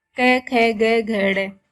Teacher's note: इन वर्णों के उच्चारण में जीवा कंठ का स्पर्श करती है।